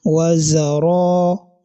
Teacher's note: al-mad al-asli, that is the basic elongation, which has a duration of only 1 second. So you are going to say wazara.